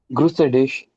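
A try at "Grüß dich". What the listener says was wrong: So where do you see a? It's just grus, right? try to guess anything. German is a phonetic language. That means you have to read exactly the way it is written. There will be exceptions, but you never have to guess how to read something exactly the way it is written, right? So here it is grüße. Here it is grüß.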